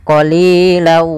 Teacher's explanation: kalau idgam bunah yaitu masukkan tanwinnya ke huruf wau awalnya qolilan karena ketemu wau masuk ke huruf wau tanwinnya menjadi qolilaa